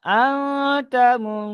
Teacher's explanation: নুন সাকিনের আওয়াজকে নাকে তুলে এক আলিফ পরিমাণ গুন্না করে পড়তে হবে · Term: ইকফা